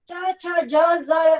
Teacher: ચ છ જ ઝ યમ આ છે ઈ તાળવ્ય વ્યંજન છે. જીભ ઉપરના દાંત આગળ થઈ અને ઉપર જાય છે અને તાળવાને અડે છે અને ઉચ્ચારે છે, એટલે તાળવ્ય વ્યંજન. આની બાજુમાં લખજો સ્પર્શ તાળવ્ય સંઘર્ષી વ્યંજન આને કહેવાય છે.